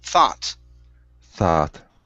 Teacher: Instead of thought, it's thaw with an ah sound.